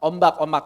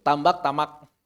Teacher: kalau sebelumnya M dan setelahnya B, maka B-nya juga hilang atau samar